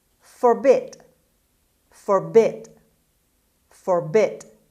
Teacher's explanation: the stress is on the second syllable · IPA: /fərˈbɪd/